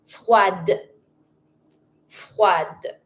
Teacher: But, if it's something else that is feminine, and I want to put, of course, that adjective feminine, I'm going to add my feminine e, then I'm going to pronounce my d.